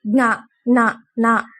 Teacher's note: ప్రతి వర్గంలో రెండు అక్షరాలు అంటే ఖ ఛ ఇవి మహాప్రాణక్షరాలు అంటే ఒత్తుతో పడుకుతున్నాం కాబట్టి మహాప్రాణక్షరాలు తర్వాత అనునాసికాలు ఇవి వర్గంలో లాస్ట్ వస్తాయి జ్ఞ న వీటిని ముక్కుతో పలుకుతాం. అందుకే వాటిని అనునాసికాలు అంటారు.